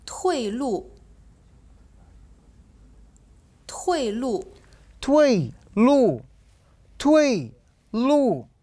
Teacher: نلاحظ أن كلا المقطعين الصوتيان كان مستوى الصوت نازل إلى الأسفل